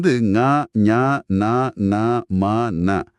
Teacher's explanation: மெல்லின எழுத்துக்கள் மூக்கை இடமாக கொண்டு பிறக்குது. சளி பிடிச்சிருக்கும் போது நம்மால இந்த எழுத்துக்களை சரியா உச்சரிக்க முடியாது.